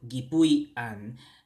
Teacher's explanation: we cancel out the vowel from the root word, so we just get gipuy-an. And remember, we changed that canceled vowel to a hyphen.